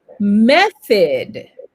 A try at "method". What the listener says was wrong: Once again. So, qu'est-ce que vous faites pour prononcer? Vous l'avez bien compris, c'est le TH ici qui va pas forcément nous aider, mais c'est pas grave puisqu'on est là pour apprendre et on va le prononcer correctement dans quelques instants. Vous, ici, c'est un soft TH, OK?